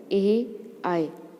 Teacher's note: कंठ और तालु इन दोनों का प्रयोग हुआ इसमें। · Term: कंठ तालु